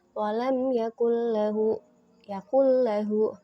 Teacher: maka harus dibaca idgham tanpa disertai dengung di hidung